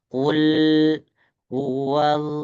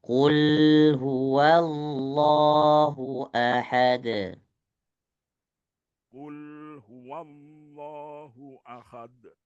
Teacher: Tahan ya, tahan sedikit perhatikan ketika lam yang sukun di sini ada tawasud, tahan satu harokat. Qul huwal satu harokat.